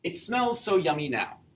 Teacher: This is a foot all by itself because the word yummy has 2 syllables and the first one is the stressed syllable. It's not yummy, it's yummy.